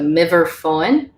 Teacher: And then here we have Miverphone, so my phone number. So ma becomes m and attaches to iver, so Miverphone. Here's just the note here that tells you that mo plus iver equals miver, because that sound drops off and it attaches.